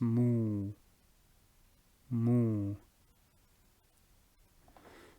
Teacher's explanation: with a dhamma, you will be pursing your lips